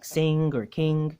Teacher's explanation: you're tempted to say this velar nasal sound the ng sound as in sing or king